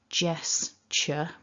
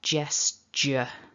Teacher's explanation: the dictionary standard gesture with that ch which is unvoiced